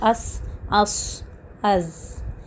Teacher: The tip of your tongue stays in between, it hangs in between the upper and the lower front two teeth.